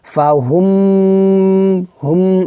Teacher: ফা হুম, হুম, এখানে এভাবে গুণ্য হবে, আমরা 2 আলিফ পরিমাণ টেনে গুণ্য করব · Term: ইদগাম গুন্না